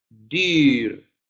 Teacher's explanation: como el I de castellano, pero redondo. Dir.